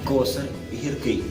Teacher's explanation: приголосне р вимовляється послідовно твердо в кінці складів і слів